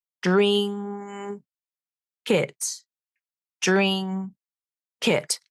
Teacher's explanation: here you have two final consonants they split and that actual final consonant moves over so it sounds like drink it drink it